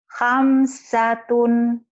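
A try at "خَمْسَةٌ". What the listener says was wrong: Emang ibu orang seberang, hamsatun. Itu kan bunyi O. Pak. Homsah, homsatun.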